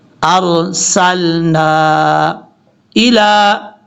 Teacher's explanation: نون کے آگے جو الف کے اوپر مد ہے اس کو 2 الف کے برابر لمبا کریں گے. ارسلنا الا، کھڑا زبر لام کے اوپر جو ہے یہ پڑھا جائے گا، یا کو چھوڑ دیں گے.